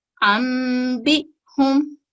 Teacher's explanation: जैसा कि हमने पढ़ा, नून साकिन और इसके बाद बा आ गया है तो नून साकिन को हम मीम साकिन में तब्दील कर देंगे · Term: इकलाब